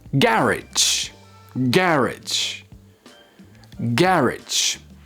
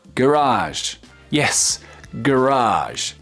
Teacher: So you stress the second syllable in American English, garage. And the first syllable in British English, garage.